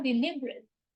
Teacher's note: we have a schwa sound in deliberate, the second E. The E before R is a schwa sound, so deliberate.